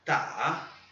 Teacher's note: Terceiro tom, né? Aquela vogal tremida, né, do chinês.